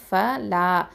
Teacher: அலிஃப் மத் இருக்குது. இது 2 அலிஃப் நீட்டணும்.